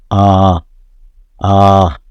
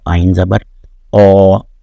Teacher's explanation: الف میں کھلے گلے سے اور الف کی آواز کے ساتھ سانس جو ہے منہ سے باہر آتی ہے